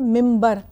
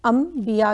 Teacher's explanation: अगर नून सकून के बाद बा है तो इसको मीम करके पढ़ना है। अक्सर हम एक वर्ड यूज़ करते हैं मिम्बर, लेकिन लिखते हम उसको मिन बर हैं, मीम ना बे रे, लेकिन पढ़ते मिम्बर हैं। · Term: इक़लाब